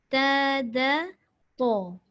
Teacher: To tu masam tapi jangan muncung. Sebab to itu masih lagi huruf lidah, bukan huruf bibir.